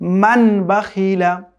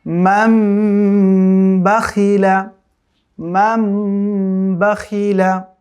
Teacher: আবার ওই যে দেখেন, এটা ছিল মূলত মান বাখিলা, কিন্তু ইকলাবের নিয়মের মধ্যে পড়ার কারণে নুন সাকিনের পরে যেহেতু ইকলাবের হরফ বা এসছে, এখন এটাকে মিম দিয়ে পরিবর্তন করে পড়তে হবে। এটা ছোট্ট মিম এখানে দেওয়াই আছে।